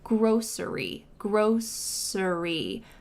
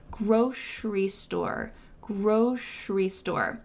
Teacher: There's two different pronunciations for this and it's just a regional difference or a personal preference. You can say grocery with an s sound in the middle. Grocery. Grocery. But for me, I say grocery with a sh sound in the middle.